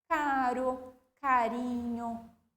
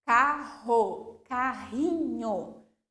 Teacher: apenas um r o som vai ser fraco